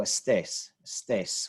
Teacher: to throw in there it changes the which syllable of stress the stress syllable is the final syllable so no Estes Stace we want to stress that last syllable